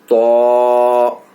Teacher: تو کا مخرج ہے زبان کی نوک اور اوپر کے دانتوں کی جڑ سے. تو مطلب زبان جڑ جو ہوتا ہے جڑ, تو اس میں زبان کو ٹچ کرنا ہے جڑ میں.